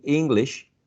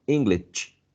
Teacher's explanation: some pronounce incorrectly because it's sh, not ch.